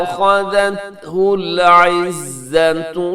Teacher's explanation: یہاں خا موٹا ہے، باقی سب حروف جو ہیں اس کے اندر باریک ہیں